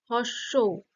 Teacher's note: ঠোঁটটা কুচকে যাচ্ছে তাইতো ছোট্ট হয়ে আসছে এটা কি হচ্ছে কুঞ্চিত হচ্ছে তাই এটা কুঞ্চিত তাহলে এটা ঠোঁটের